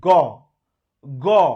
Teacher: দেখেন জোরে একটা ঘর্ষণ লাগছে, যেহেতু জোরে ঘর্ষণ লাগছে তাই এটা ঘোষ ধ্বনি